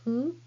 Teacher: Hu is not a fricative sound like English F sound. It is more like blowing a candle very gently. Your mouth looks like U shape and say hu. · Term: hiragana hu